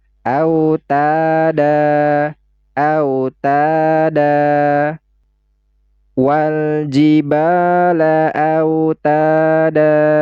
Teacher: Ya, tidak dibaca an, tapi nanti kita baca fathah karena dia berhenti. Jadi tidak dibaca dan, tetapi dibaca da dan dipanjangkan 2 harokat. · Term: mad i'mad